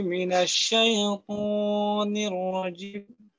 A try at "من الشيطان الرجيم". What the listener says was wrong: শাই বলার সময় শাই তো ইয়ার মাঝে তো নরম করতে হয়, তো এখানে যেন ধাক্কা না লাগে এইটা একটু খেয়াল রাখবেন।